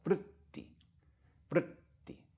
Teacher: The R is itself a vowel,